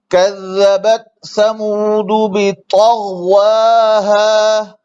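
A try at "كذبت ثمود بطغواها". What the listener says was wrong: ये होंठ गोल ना होने चाहिए। कज़्ज़बत समूद बितग़वाहा बितग़वाहा, मोटा हो मोटा।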